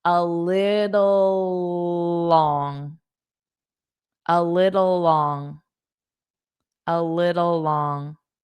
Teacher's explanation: just hold out that last L and then say the next word because it starts with L.